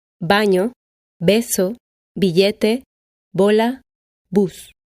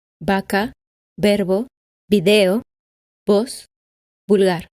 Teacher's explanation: Although for spelling in Spanish the letters B and V are different letters, unlike English, the pronunciation does not vary according to whether the word is spelled with a B or a V. Both B and V are pronounced B at the beginning of a word.